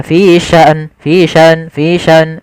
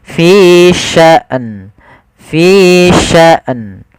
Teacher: matikan hamzah baru matikan nun